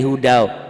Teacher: N ini tanwin atau nun mati kan bunyinya n. N ini menjadi w, menjadi waw, karena itu hukum idgham bigunnah.